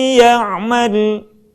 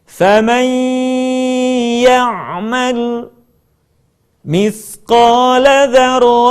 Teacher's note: akan lebih sempurna kalau sebagian suara kita kita keluarkan melalui rongga hidung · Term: gunah